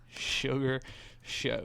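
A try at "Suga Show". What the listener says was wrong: No, Sugar. Sugar. He ain't got no R in there.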